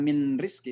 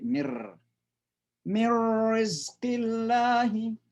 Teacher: Jadi suara nun betul-betul masuk ke suara ra, mirri. Jadi seolah-olah ra itu tasydid saja, enggak ada suara nun, karena suara nun masuk betul ke ra. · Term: idgham bilagunna